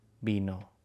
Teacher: Cuando dices vino tiene que venir de tus labios, no de tus dientes.